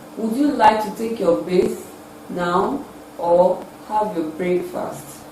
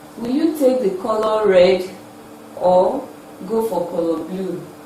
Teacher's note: Rising tune is also used for the first alternative in alternative questions